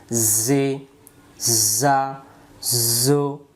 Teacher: যা অক্ষরের সামনের নিচের দাঁতের আগা থেকে শীষ দিয়ে পড়তে হয়।